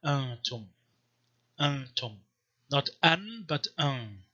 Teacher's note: First of all, nasalization means that nun is not pronounced as a full consonant, but just nasalizes the preceding vowel